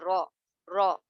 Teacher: تو یہ آپ کی زبان جو ہے اوپر کے ہارڈ پیلٹ سے لاسٹ والا جو حصہ ہے اس کا, تالو کا پچھلا حصہ, اس سے ٹچ ہو کر یہ رو ادا ہوتا ہے